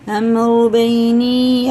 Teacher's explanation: یا ساکن سے پہلے زیر ہے تو کھڑے زیر کی طرح کھینچ کے پڑھیں گے ایک الف کے برابر